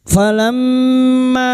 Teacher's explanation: mim yang bertasdid gunah musyadadah kita dengungkan selama tiga harakat